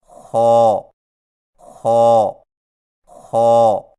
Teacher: خا کی ادائیگی میں زبان کی جڑ کو تالو کی طرف بلند کرتے ہوئے موٹی آواز میں پڑھیں